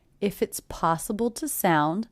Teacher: The word to is definitely reduced to the schwa